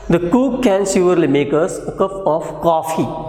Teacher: So there will be falling and rising tone on coffee.